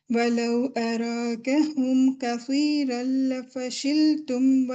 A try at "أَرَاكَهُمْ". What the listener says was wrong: الرا، را کو ہیوی کریں. الرا.